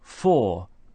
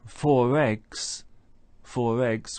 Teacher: we can hear that linking R joining to the following vowel sound